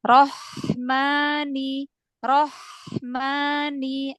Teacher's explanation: lagi ke depan biar hak putus aliran nafas aliran suaranya ya karena ha itu punya sifat Hames mengalir nafas m punya sifat rakhwah dialirkan suaranya jadi berarti kalau ee rakhwah